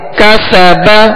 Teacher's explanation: سین میں سختی سیٹی کی آواز ہوگی اور اس کو باریک پڑھیں گے